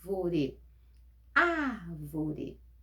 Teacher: a antepenúltima sílaba é mais forte · A palavra proparoxítona, só para a gente recordar, é aquela palavra que a antepenúltima sílaba é a mais forte.